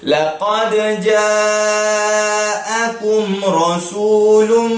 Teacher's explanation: Mad wajib muttasil. Jadi bacanya 4 ataupun 5 harakat.